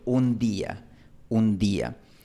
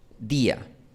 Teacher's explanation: En este caso, este fonema D está después de una N. Por eso se pronuncia como un sonido fuerte, un cierre completo. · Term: D fuerte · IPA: [d]